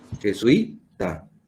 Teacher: Se carga la voz en la penúltima, o sea, jesuita.